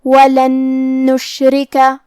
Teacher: نون حروف الادغام بغنہ میں سے ہے تو ہم یہ نون کو دوسرے نون میں ملا کے غنہ اور تشدید کے ساتھ ادا کریں گے